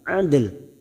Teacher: huruf dal yang mati asli di tengah kalimat dan mempunyai sifat qalqalah yaitu pantulan adl. Maka kita lunakkan huruf dal dengan huruf lam.